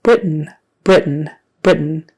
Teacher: so that final syllable is more like just an n Sound we say Brit and then we make the end sound Britain